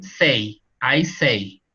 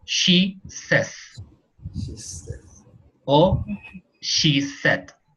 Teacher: Pero cuando se pone una S o una D, el diptongo se muere en esa palabra y queda una E.